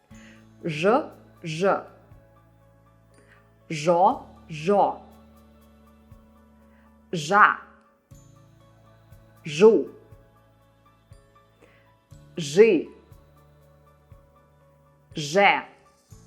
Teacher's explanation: the Russian consonants zh, sh, ц are always hard. So no matter what goes after them, you'll always read them as hard consonants.